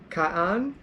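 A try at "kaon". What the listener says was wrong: So remember your pronunciation. You said kaan. It's O, so kaun.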